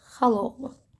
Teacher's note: yanaşı gələn saitdən biri düşdü, digəri isə uzanma olmadan tələffüz edildi.